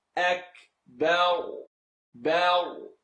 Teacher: You're going to end on a heavy ra because when you stop on a letter, ra, you're going to look at the letter before and it makes it heavy.